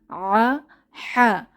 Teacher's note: এর উপরে নিচে কোন নুক্তা নেই এটি খালি হা আ হা এই দুটি হরফ কণ্ঠনালী বা গলার মাঝখান থেকে বের হয়